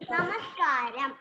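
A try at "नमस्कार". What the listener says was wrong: It is not namaskaram, it is only namaskar.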